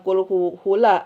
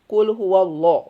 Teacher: lafadz jalallah atau nama-nama Allah itu harus ditebalkan lamnya.